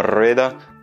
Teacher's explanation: un seul R au début, comme dans rueda, tu vas le prononcer un petit peu plus fort